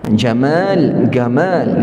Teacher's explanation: orang-orang di Mesir dia tak boleh sebut ja dia sebut ga